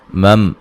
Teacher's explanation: میم ساکن کا اظہار ہوگا، غنہ نہیں کریں گے